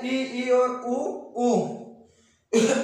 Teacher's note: हमारा मुख बिल्कुल कम खुलता है, यानी न के बराबर बिल्कुल थोड़ा मुख खुलता है। देखिए आप बोलकर उच्चारण करके भी देख सकते हैं, ई और ऊ।